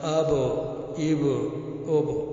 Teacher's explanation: با دونوں ہونٹوں کی تری سے نکلتا ہے